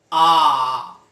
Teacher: बड़ा आ बोलने में मुख द्वार लगभग पूरी तरह खुल जाता है, खुला रहता है, इसलिए विव्रत स्वर बड़ा आ है।